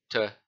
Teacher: the sound is produced by the tongue touching the back of the teeth